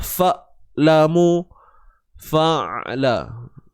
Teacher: huruf ain bila kita matikan, jangan tahan suara. Fa. Ataupun jangan tertukar dengan bunyi hamzah.